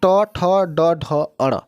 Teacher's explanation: अब इसके आगे देखिए मूर्धन्य या कठोर तालु के अगले भाग से, यानी कि तालु के अगले और दांत के जस्ट ऊपरी भाग में जब जो स्पर्श होता है उसे मूर्धन्य कहा जाता है।